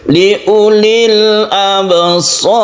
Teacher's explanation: Ro sukun sebelumnya fathah, maka ro-nya ini ditafkhimkan. Tafkhim artinya tebal.